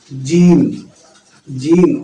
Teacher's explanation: جیم کا مخرج جو ہے، زبان کا بیچ کا حصہ تالو پہ سٹائیں گے تو انشاءاللہ جیم ادا ہوگا بآسانی، جیم، جیم۔